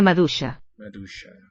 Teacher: So I don't hear a sequence ue. I think the I is a palatalizing sign like in Irish.